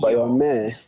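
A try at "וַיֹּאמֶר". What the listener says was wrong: Right, and let me hear that resh at the end, vayomer.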